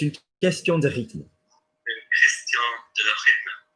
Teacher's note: You've got QU becoming K and TH becoming T.